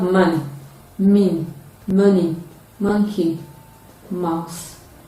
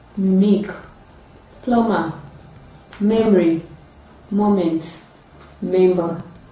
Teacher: It engages the two lips during its production, and then it is a voiced bilabial nasal sound.